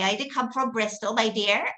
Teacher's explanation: your voice goes up at the end and you've got this kind of very nasal sound